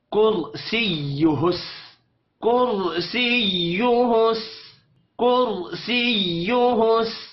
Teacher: وسع وسع کرسیہ، کر را ساکن سے پہلے پیش آ رہی ہے، را کو موٹا پڑھیں گے. کرسیہ، حرکات کھینچ کر نہیں پڑھی جائیں گی، شد پر تھوڑا سا زور دینا ہے